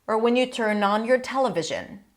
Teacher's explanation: Here I hear a full stop because rising, falling intonation.